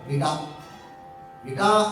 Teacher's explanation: ವಿಟ ಅಲ್ಲ ಮಹಾಪ್ರಾಣ ಅಲ್ಲ ಅಲ್ಪಪ್ರಾಣ